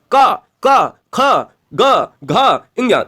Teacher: ये गले से आ रहे हैं इसलिए इनका नाम कंठ पड़ा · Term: कंठी स्पर्श व्यंजन